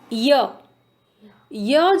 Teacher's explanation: जब हम इसको प्रोनाउंस करते हैं ना तो हमारी टंग मुंह में किसी भी हिस्से को टच नहीं करती है। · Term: अंतस्थ व्यंजन